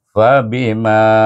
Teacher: Bi mim Alif Ma bertemu dengan alif baca dengan asali fabima Ma yang panjang dua harakat